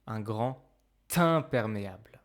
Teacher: whenever you do the liaison with the letter D. It actually sounds like T.